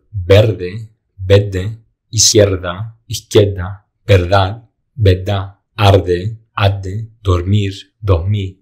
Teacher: In some regions, the R at the end of a syllable is not pronounced, making the consonant that follows doubled or just the R silent.